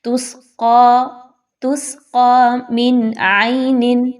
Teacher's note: سب سے پہلے تو سین میں سیٹی کی آواز لائیے، قاف کو موٹا کر کے پڑھیے اپنے سافٹ پیلٹ کے ساتھ، زبان کی جڑ اس کو ملائیے · نون کی آواز کلیئر پڑھی جائے گی کیونکہ آگے حروف حلقی میں سے ایک حرف عین آ رہا ہے